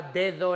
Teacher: Si yo tenía la palabra dedo en español, las dos las escribimos con D, pero en realidad son dos alófonos distintos. Uno es el dental oclusivo, D, el primero, pero luego do es interdental y es fricativo, o es aproximante, depende cómo queréis.